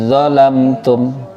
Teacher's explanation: Dal sukun bertemu dha, langsung moncong, langsung moncong. Dalnya jadi dha, jangan beringis tapi langsung moncong. Menang dha-nya, langsung moncong.